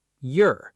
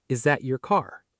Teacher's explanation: slide the front of your tongue into a light palatal glide, J, and immediately flatten it into an unstressed sound. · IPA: [jər]